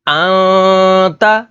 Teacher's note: تا حروف اخفا میں سے ہے تو یہاں پر اخفا یعنی غنہ کر کے پڑھیں گے